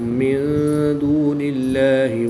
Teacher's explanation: نون ساکن کے بعد دال حروف اخفا میں سے ہے تو یہاں پر بھی اخفا ہوگا، یعنی غنہ زمانی کر کے پڑھیں گے